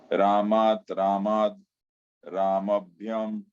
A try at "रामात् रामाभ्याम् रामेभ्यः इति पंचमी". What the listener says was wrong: प्रभु ये रामात मत बोलिए, ये जो रामात का जो दूसरा फॉर्म दिखा है ना इधर, ये मत बोलिए।